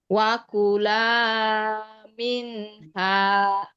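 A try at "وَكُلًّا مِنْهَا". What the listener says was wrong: La-nya dibaca panjang berapa harokat Bu? Dua harokat saja ya, tidak dibaca lebih.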